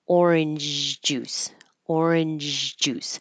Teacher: Instead of completely stopping the airflow for orange, I'm going up and stopping orange and then not completely bringing my tongue down so that there's turbulent airflow over my tongue between the roof of my mouth and making a zh sound